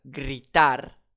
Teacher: En effet, on va l'accentuer sur la dernière syllabe puisque c'est un R, donc une consonne, ce n'est pas un N, ce n'est pas un S, je n'ai pas d'accent directement écrit, je vais donc accentuer sur la dernière syllabe,